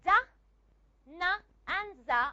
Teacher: da, na, and za are all voiced alveolar sounds. So if you look at this, the sound da is a voiced alveolar.